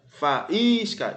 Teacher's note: esse I forma hiato com a vogal anterior, é a sílaba mais forte e está seguido de um S, não tem problema.